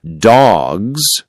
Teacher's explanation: In dogs, the S sounds like a soft Z.